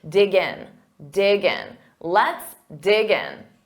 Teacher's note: so you hear that g in front of in but you have to say them as one word